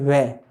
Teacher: वै वर्ण जो है दंत प्लस ओष्ठ की सहायता से बोला जाता है, इन्हें कहते हैं दंतोष्ठ।